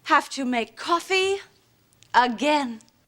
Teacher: goes up in pitch because she's not done talking and then the pitch at the end again goes down because that is the end of her statement